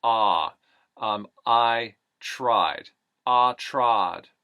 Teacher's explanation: right up into that puff at the top of the mouth the eye becomes a pure aw sound